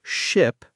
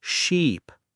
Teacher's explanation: the difference between ship, short I, and sheep, long e